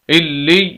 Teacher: यहाँ पर ये या है, इससे पिछला लफ्ज़ यानी वो भी या ही है और उसके नीचे ज़ेर है, तो इस वजह से हम इस या को, इस पहली वाली या को हम लंबा करके पढ़ेंगे। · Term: या मद्दा